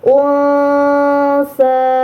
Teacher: ada huruf nun sukun bertemu dengan huruf sa. Ini namanya ikhfa hakiki. Maka nun sukunnya harus dibaca samar.